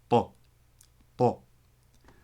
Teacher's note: the Tat, which is a T with your tongue hitting the forward part of your palate. So just get your tongue in that position, curved up in the front, go Ta.